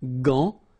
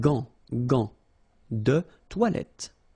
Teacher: But in that case, you've got this A-N, so it's nasal, gant, and then final T is not pronounced here